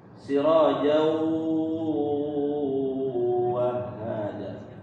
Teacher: Idgham bi gunnah, tanwin bertemu huruf waw masuk, idgham, dengung di pangkal hidung. وَجَعَلْنَا سِرَاجًا, dengungnya terasa bukan di rongga apa namanya, di mulut.